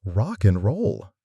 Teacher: Rock and roll becomes rock and roll. The D just vanishes.